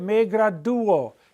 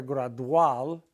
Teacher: we're going to have an accented U, and we're going to take that diphthong and we're going to break them up